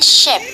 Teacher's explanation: The first sound in ship is created by bringing the blade of the tongue into constrictions of close approximations with the palatoalveolar region. This sound, described as sh, is a voiceless palatoalveolar fricative.